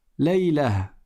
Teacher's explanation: si tu t'arrêtes dessus, tu ne dis pas Laylatu ou Laylatun, tu dis Laylah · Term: ta marbouta